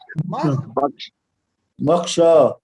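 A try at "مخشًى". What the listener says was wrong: نا مخشا نہیں, مخشن ہو گئے. مخشا پلس تنوین ہے نا. ہاں مخشا پلس تنوین. اور یہ تنوین جو ہوتی ہے, تنوین ہوتی ہے نون ساکن کے برابر. ہاں ویسے میں بریکٹ میں لکھوں گا اس کو, نون ساکن.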